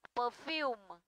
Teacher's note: Perfume trọng âm không rơi vào ơ và rơi vào u dài